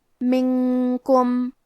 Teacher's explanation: کاف حروف الاخفاء میں سے ہے اور اخفاء کا معنی ہے چھپا دینا تو ہم نون ساکن کو چھپاتے ہوئے لیکن غنہ کے ساتھ یہ حکم کو ادا کریں گے